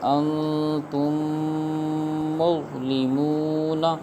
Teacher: حمزہ، نون، زبر ان، تا، میم، میم، پیش تم، انتم، میم، غا، پیش مز، انتم مز، لام، زیر لی، انتم مغلی، میم، واو، پیش مو، انتم مظلمون، نون، زبرنا، انتم مظلمون۔ اب یہاں پر میم ساکن کے بعد دوسری میم آ گئی ہے تو لہٰذا یہاں پر ادغام شفوی ہوگا، یعنی گنہ کر کے پڑھیں گے